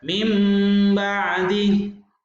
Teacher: Huruf nun hilang, seakan-akan kita membaca mim dan ba. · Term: iklab